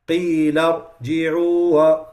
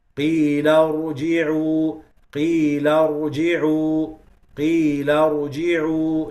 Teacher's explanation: You have to keep the ra running for a very short period of time. qila ruji'u, qila ruji'u, qila ruji'u, like this. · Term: one ra